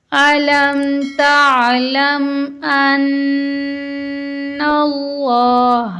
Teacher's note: ان اللہ میں نون مشدد ہے، نون مشدد اور میم مشدد پر ہمیشہ غنہ ہوتا ہے. لفظ اللہ کو ہم موٹا پڑھیں گے کیونکہ لفظ اللہ سے پہلے زبر آیا ہے